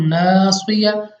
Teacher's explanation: उसके अलावा अलिफ से पहले जबर आ गया, तो नासिया, यानी हमने यहाँ पे अलिफ मद्दा है तो इसको लंबा करके पढ़ना है